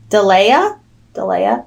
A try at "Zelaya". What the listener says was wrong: It's a Z. Zelaya.